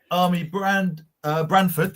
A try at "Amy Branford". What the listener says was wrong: It's Amy Brand Army. She's not in the army. You did.